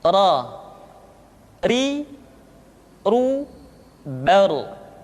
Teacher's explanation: huruf ra, diucapkan dengan menyentuhkan punggung lidah dengan langit-langit.